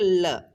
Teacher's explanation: ल को अपन बोलेंगे तो अपने जी का आगे का भाग है ना, वो अपने किसको छुएगा, मसूड़े को छुएगा। और जो साइड से, दोनों साइड से क्या होता है, बगलों से वायु बाहर निकलती हैं, उन्हें बोलते हैं पार्श्विक वर्ण, और इन्हें ही हम बगलीय वर्ण भी बोलते हैं।